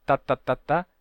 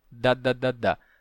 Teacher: o t e o d são quase iguais a diferença do T para o d né a articulação é a mesma · A diferença está nas cordas vocais, né? Que o T, T não tem vibração das cordas vocais, mas o D, D tem.